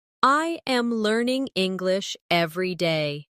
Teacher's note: Notice how my voice rises slightly on learning and falls at the end on day.